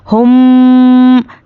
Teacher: हाँ मीम पेश हम, तो गुन्ने के साथ अदा करना है। हम, नाक में आवाज़ को रोकना है, तो इससे क्या है? गुन्ना होगा और गुन्ने की मिक़दार 1 अलिफ के बराबर है।